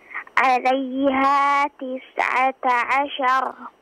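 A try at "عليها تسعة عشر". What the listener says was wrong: Afwan, jelaskan lagi ainnya.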